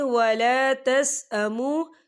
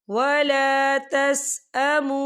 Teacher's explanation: वाव साकिन से पहले पेश है और इस पर छोटी सी मद भी है, तो हम इसे 4 हरकत के बराबर खींच पढ़ेंगे। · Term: वाव मद्दा